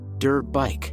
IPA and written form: dɜrt baɪk (dirt bike)